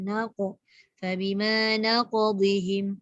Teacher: Perhatikan naqadihim ni, heretkan dia. Qalqalah yang tebal.